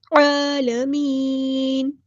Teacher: لام یہاں پر لام قمریہ ہے اور اس کو ہم نے ظاہر کرنا ہے ، عین کو وسطی حلق یعنی مڈل تھروٹ سے ادا کرنا · با کو ہم نے لام کے ساتھ ملا دینا ہے، حمزۃ الوصل ہمارا ڈراپ ہو جائے گا ، لام یہاں پر لام قمریہ ہے اور اس کو ہم